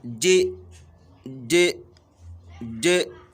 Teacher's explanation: at the beginning of the pronunciation of the letter, the makhraj closes totally, but when you are releasing the tongue, the air flows out smoothly. This is the same rule that applies to any word that is shadid al-majhur. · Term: Jim with Qalqala